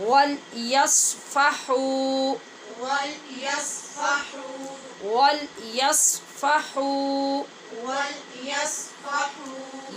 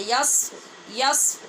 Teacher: یس نہیں پڑھنا، صاد ہے نا، اس کو پر پڑھنا ہے